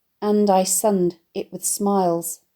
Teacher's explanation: the line is predominantly made up of stressed syllables with two of them forced next to one another, with the slightest of pauses in between them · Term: truncated line